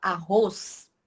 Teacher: a gente não escuta o som do Z é como se arroz tivesse o som de s no final